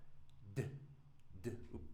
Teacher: But if I touch my throat, D There's that vibration. So, this is going to be a voiced but blocked sound.